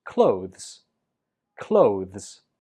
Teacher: The last syllable is a weak Z.